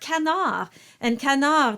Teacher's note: the N is followed by a vowel and so that's your clear sign that it will not be a nasalized ah sound